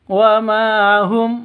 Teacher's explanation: ma panjang 2 ketukan karena ada alif diawali dengan fathah.